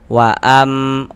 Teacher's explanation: yakni dengan merapatkan kedua bibir, namun tidak menekan. Jadi dirapatkan saja bibirnya. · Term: iqlab